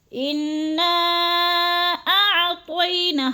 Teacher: انا کی نون مشدد ہے، سختی سے جماؤں کے ساتھ ہم نے غنہ کرنا ہے ادھر، اور نا پہ جو ہے مد منفصل ہے، 4 الفی مد ہے، اس کو 4 حرکات کے برابر ہم نے لمبا کرنا ہے، جیسے انا اعطینا، حمزہ اور عین میں فرق کر کے پڑھنا ہے، کیونکہ حمزہ حلق کے آخری حصے سے نکلتا ہے اور عین حلق کے درمیانے حصے سے نکلتا ہے